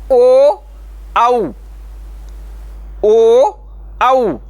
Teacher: आवाज ध्वनि तो कंठ से निकलती लेकिन ओट का भी सहारा लेना पड़ता है